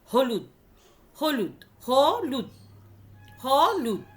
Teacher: হয়ের ওপরে কিন্তু আমরা অনেক স্ট্রেস দিচ্ছি। যখন উচ্চারণ করছি তখন প্রথমেই আমার শ্বাসবায়ুটা অনেকটা বেরিয়ে যাচ্ছে, ফলে হলুদটা অনেক ক্ষীণ হয়ে যাচ্ছে। · হটা যখন আমরা উচ্চারণ করি আমাদের শ্বাসবায়ু অনেকটা বেরিয়ে যায়।